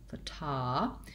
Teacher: And so thinking about it as fata, with that f being quite short and the ta being stretched out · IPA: /fəˈtagrəfər/